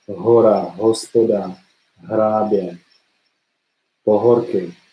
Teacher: h is voiced, so there is vibration, there is tone from the vocal cords when you pronounce h, and your tongue is relaxed. It doesn't really move.